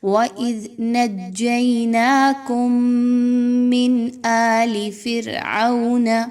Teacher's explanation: نون ساکن کے بعد حمزہ کا حرف ہے، یہاں پر اظہار کا قاعدہ فالو کریں گے، کسی طرح کا غنہ نہیں کرنا نون ساکن پر۔